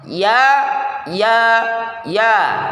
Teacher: tempelkan lidah tengah tidak terlalu cepat pada langit-langit keras